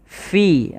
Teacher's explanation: hati-hati jangan terbaca dengan piha, tapi dia fi, alirkan nafas